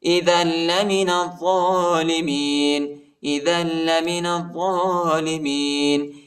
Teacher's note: دال کو لام کے ساتھ ملائیں گے اور لام کو شدت کے ساتھ سختی کے ساتھ پڑھیں گے